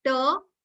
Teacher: if your r is followed by a consonant you are not going to pronounce it